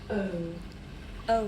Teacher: This is a diphthong, a double vowel sound. The shape the mouth makes changes from the beginning of the sound to the end. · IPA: /əʊ/